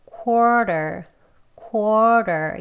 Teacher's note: 이 W 소리를 내지 않고요. 그냥 quarter 이렇게 발음합니다. 그래서 그냥 quarter quarter 이렇게 발음을 해요.